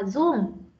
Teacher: Cái giọng Bắc nó thường là không phát âm được âm R.